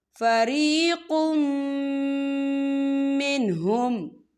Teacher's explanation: یتولا فریق منہم، یا دیکھیں فریقم، قاف کے پر تنوین ہے اور تنوین کے بعد جو ہے میم آ رہا ہے اور میم جو ہے حروف یرملون میں سے ہے، تو یہاں پر ادغام ہوگا، تو ہم اسے غنے کے ساتھ پڑھیں گے۔